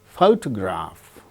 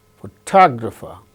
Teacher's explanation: in the case of the word photograph the first syllable gains stress the case of the second word photographer second syllable gains stress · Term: word stress